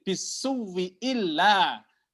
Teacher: Ibdal. Ya, pertama ibdal dulu hamzah pertama menjadi waw, kemudian menjadi idgham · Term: ibdal dan idgham